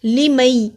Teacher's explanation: लिमई यशा के इदगाम में जज़म वाला हरूफ साइलेंट हो जाता है।